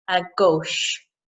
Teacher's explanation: We've got the CH sound. Now in English, we would pronounce that as a ch, but in French is sh